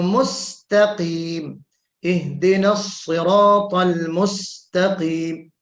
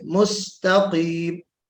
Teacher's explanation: सीन को बारीक पढ़ना है, ता को बारीक पढ़ना है, काफ को मोटा पढ़ना है